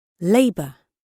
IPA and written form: ˈleɪbər (labour)